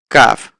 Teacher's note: কাফ হচ্ছে আমাদের জিহ্বার একটু সামনে এসে উপরের তালুর সঙ্গে লেগে উচ্চারণ হবে